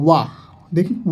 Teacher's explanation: देखिए वाह जब आप बोलेंगे तो ऊपर के दांत प्लस निचला ओठ बनेगा, आपका टच करेगा वाह, देखिए वाह बोल के देखिए, तो सघोष अल्प प्राण में आएगा